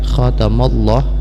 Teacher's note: lafaz jelas dibaca tafkhim, dibaca tebal karena di belakangnya baris fathah.